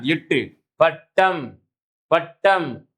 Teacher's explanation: எட்டு எண்ணு என்று சொல்லக்கூடிய இந்த இரண்டு மெய்யெழுத்துக்களும் நாவின் நுனி அன்னத்தின் நுனியை பொருந்துவதனால் பிறக்கின்றன. எட்டு பட்டம், பட்டம் இந்த நாவினுடைய நுனி அன்னத்தினுடைய நுனி என்ன செய்யுது, நாவின் நுனி அன்னத்தின் நுனி என்ன செய்யுது தொடுவதனால் பிறக்கின்றது.